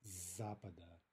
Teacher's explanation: because of the consonant cluster, you have the s becoming voiced.